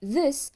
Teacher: the sound th in this is voiced, which means the vocal cords vibrate while pronouncing the sound